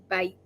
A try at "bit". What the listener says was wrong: B-I-T. Didn't you make the E sound? The last letter